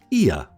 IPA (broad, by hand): ɪə